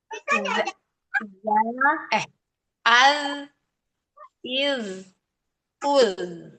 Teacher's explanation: Makhraj huruf zal ada di ujung lisan menyentuh gigi seri atas